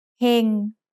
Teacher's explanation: Heng has a low-class consonant with a live syllable ending, so it's mid-tone. Sara-e ฮอนกฮูกงองู heng.